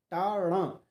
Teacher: टा अणा दोनों ही मूर्धा हैं। ठीक है, मूर्धन्य है।